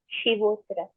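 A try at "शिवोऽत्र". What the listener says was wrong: So it is Shivotra. You need to extend that sound for one more matraka.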